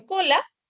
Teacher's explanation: en cola tu sonido es de la oclusiva velar